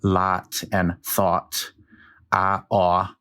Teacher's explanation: When I pronounce them, they're both ah. But there are dialects east of the Mississippi that pronounce those as two different vowels